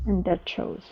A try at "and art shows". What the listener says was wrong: Give me a little bit more R. End art shows.